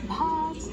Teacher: Push so much breath out with the bha that you feel it on your palm.